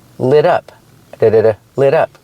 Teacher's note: We hear the pronunciation of the T in lit up. It sounds like a fast D.